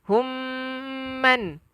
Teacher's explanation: Mim yang ada sabdu wajibal gunnah, wajib dengung.